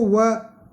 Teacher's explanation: जीभ तो दांत से टकराती है और होठों की आकृति बदल जाती है, तो दांत और होठ दोनों काम में आ रहे हैं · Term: दंत और ओष्ठ